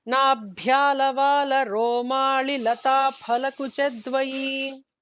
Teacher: the bha has to be mahaprana and li is hrasvam, don't drag it